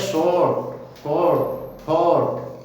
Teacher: अगर आर से पहले कोई वोवेल हो और बाद में कॉन्सोनेंट हो तो आर का प्रोनाउंसिएशन नहीं होता